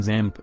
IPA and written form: ˈzæmp (XAMPP)